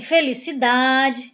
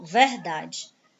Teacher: penúltima sílaba é a tônica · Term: paroxítona